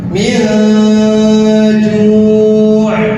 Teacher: nun sukun bertemu dengan huruf ja, maka nunnya dibaca samar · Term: ikhfa